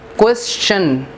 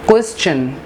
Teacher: It's not question, it's question. There is a ch sound, not sh sound here.